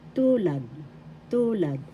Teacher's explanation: First syllable tu, second syllable lad. The first syllable has the accent.